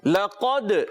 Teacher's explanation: اعوذ باللہ من الشیطان الرجیم، بسم اللہ الرحمن الرحیم، لقد، لام کو باریک لگتے ہوئے قاف حرف مستعلیہ میں سے موٹا کریں گے، دال میں قلقلہ ادا کریں گے